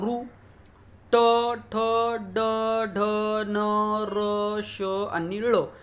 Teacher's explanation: याचा उच्चार करते वेळेस आपली जीभ आहे ती मुरडून पाठीमागे येते म्हणून याला मूर्धन्य असे म्हणतात